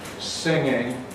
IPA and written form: ˈsɪŋɪŋ (singing)